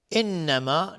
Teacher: نون مشدد دو حرکت غنه میدیم